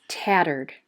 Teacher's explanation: second syllable is an r controlled syllable we hear er turd the reason why the e d is not a third syllable is because in this word the e d says a d sound